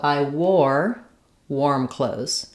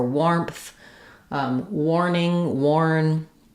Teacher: This is another tricky spelling where when we add a W to words with AR, they usually just say the OR sound rather than the R sound.